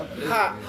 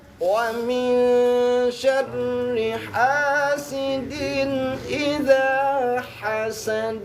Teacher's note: Ha, dua-duanya ha dari tenggorokan ke atas. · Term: ha tipis